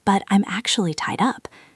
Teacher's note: When you are giving the excuse, your pitch goes down a little bit because you are giving bad news.